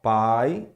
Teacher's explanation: pai todos os fonemas são orais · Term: fonemas que são somente orais